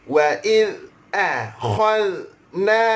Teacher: huruf dzal tidak ada qalqalah